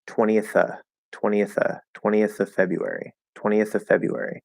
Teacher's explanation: we usually drop the v on of so you can just ignore that